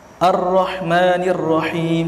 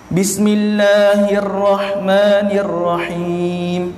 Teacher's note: Ini ada dua ra. Bila mana dua ra, jadi tekanan dia, sebab ada sabdu kan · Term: at-takrir